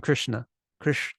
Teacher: it's really low pitch and it sounds fat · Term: third Varga s